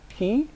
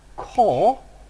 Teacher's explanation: you would have a retracted position of the tongue that is the tongue is further back in the mouth